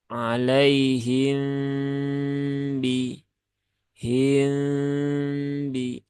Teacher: mim sukun bertemu dengan m Nah ini kan hukumnya Ikhfa Syafawi